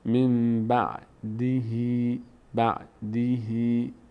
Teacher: می‌کنیم به جای نون همون قاعده زنبوری که در فارسی داریم قاعده قلب به میم یا اقلاب بهش میگن تبدیل شدن نون به میم من بعدهی اینجام میم تلفظ می‌کنیم من بعدهی این کسره ه · این کسره ه این یای کوچولو بعد از این کسره میشه صدای ای می‌گیره